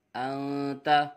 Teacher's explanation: نون ساکن کے بعد حرف اخفا میں سے تا آ رہا ہے اس لیے اخفا ہوگا، غنہ کر کے پڑھیں گے